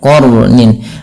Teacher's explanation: sifat huruf ro itu sifat takrir tapi takrirnya jangan banyak-banyak